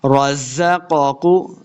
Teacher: زا پہ سختی کے ساتھ پڑھیں گے، را کو پر پڑھنا ہے، رزقاکو پہلے قاف کو موٹا پڑھیں گے، دوسرے کو موٹا نہیں کرنا۔